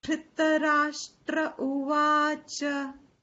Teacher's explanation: Va is long, cha is short.